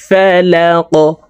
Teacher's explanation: কফ কলকলার হরফ উপরের দিকে ধাবিত করে ধাক্কা দিয়ে উচ্চারণ করতে হবে। ফালাক। ওয়াকফের ক্ষেত্রে এই কফকে সাকিন করে ফেলব।